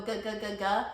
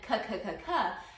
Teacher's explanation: Voice and unvoiced consonants. In your mouth, you make G's and K's the same way. It's the back of the tongue hitting the probably like middle of your mouth.